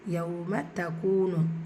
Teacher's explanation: வாவ் மதா இரண்டு ஹரக்கத்தெல்லாம் நீட்டம் கொடுக்கணும். இங்கே ஷம்சியா இந்த இடத்துல நீங்கள் சேர்த்து ஓதணும்.